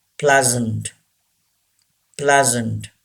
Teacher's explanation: Say this word, pleasant. This S gives the sound Z.